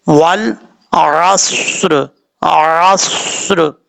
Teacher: اگر اتنا گیپ نہیں ہوگا، زبان کو آپ دانتوں کے ساتھ ٹچ کر دیں گے، ملا دیں گے، تو کبھی بھی صاد پڑھتے ہوئے سیٹی نہیں آئے گی۔ صاد میں سیٹی لازمی ہے کیونکہ یہ حروف صفیریہ میں سے ہے